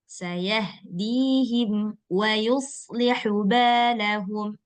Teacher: Satu sin tipis, satu shad tebal.